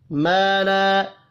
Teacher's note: 2 الف مدہ ہے، دونوں کو ایک ایک الف کے برابر کھینچ کر پڑھیں گے۔